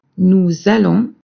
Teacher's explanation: notice also that we make la liaison between nous and the verb allons.